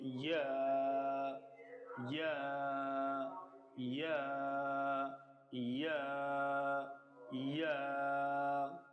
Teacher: জিহ্বার মধ্যখান তার বা উপরে তালুর সাথে লাগিয়ে আওয়াজকে শক্ত করে 1 আলিফ টেনে পড়তে হবে।